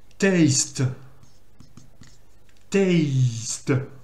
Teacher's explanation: quand on prononce le mot taste, il faut prononcer hey, c'est une voyelle longue